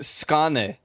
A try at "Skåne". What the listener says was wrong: That letter is pronounced O.